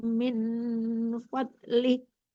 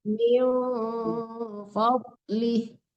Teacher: Jangan min ya, tapi miu disamarkan ke fa.